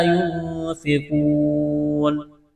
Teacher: ہے، حروف مدہ الف ہے، ایک الف کے برابر کھینچنا ہے، نون ساکن کے بعد فا ہے، حروف اخفا ہے، غنہ کریں گے، آواز ناک میں چھپائیں گے ، قاف کو موٹا کرنا ہے، بڑا قاف ہے نقطوں والا،